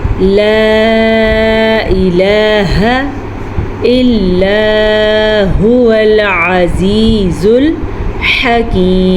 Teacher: مد کی مقدار 2.5 حرکات 2.5 سیکنڈ تک ہم اس کو کھینچ کے پڑھیں گے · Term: چھوٹی مد